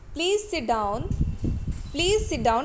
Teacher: Here you can also here you can also see the arrow here. That means the tone is rising after the word sit